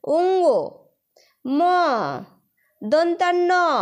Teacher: তোমাদের উচ্চারণটা নাক দিয়ে আসবে এবং বাতাসটাও কিন্তু নাক দিয়ে বের হচ্ছে। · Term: নাসিক্য ধ্বনি